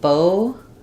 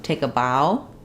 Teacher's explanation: So we have bow, like tying a bow in a string, pronounced with O. We have bow with the ow diphthong, take a bow.